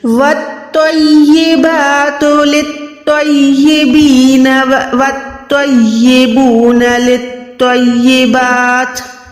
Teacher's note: جیسے ہم نے خو کے ٹائم منہ کو گولائی کیا، موٹا ادا کیا، سیم طریقے سے آپ نے تو کے ٹائم منہ کو گولائی کر کے اس کو موٹا ادا کرنا ہے